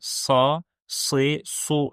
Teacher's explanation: Məlumuz olduğu kimi, sad hərfi əlif-əlif bazasında keçən üç sı səsindən birisidir. Və biz sad hərfini digər s hərf səslərindən qalın olmağı ilə ayırırıq.